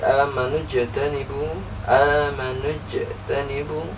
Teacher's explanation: Amanuj tanibu tidak dibaca terlalu memantul. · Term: qalqalah sughra